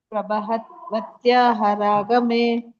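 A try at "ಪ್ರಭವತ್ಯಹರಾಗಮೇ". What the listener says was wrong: ಹತ್ಯ ಅಲ್ಲ ಅದು ವತ್ಯ.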